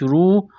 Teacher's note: را کو موٹا کرنا ہے، پیش کی وجہ سے، واو ساکن سے پہلے پیش ہے، حروف مدہ واو ہے، ایک الف کے برابر کھینچنا ہے۔